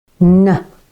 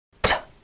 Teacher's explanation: at the same place in the mouth for both of them on the alveolar ridge · The only difference being that the air is diverted for n through the nose and out.